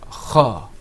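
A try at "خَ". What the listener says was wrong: No, I want to see you open your mouth a little bit more.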